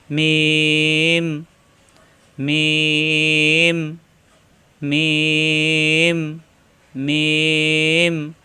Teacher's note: এই যে লম্বা টান উপরে মাথাটা একটু পেঁচানো মিম এটাও মিম দুই ঠোঁট থেকে উচ্চারণ অর্থাৎ মিলানো ঠোঁট ছেড়ে দিয়ে আবার মিলালেই হয়ে যায় মিম